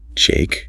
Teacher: But what if I lower my pitch, speak a little slower, and let the word drop heavily from my mouth